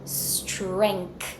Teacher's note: I have that nasal sound followed by the K I have a hidden K in this word so I want to hear that K from you strength bring